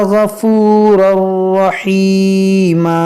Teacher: تنوین کے بعد را ہے, یہاں پر ادغام کریں گے بغیر گنہ کے, اور یہ دو زبر کو ہم الف سے بدلیں گے رحیما.